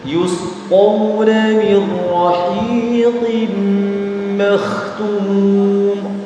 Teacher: qaf meskipun berharkat kasroh tetap dibaca tebal.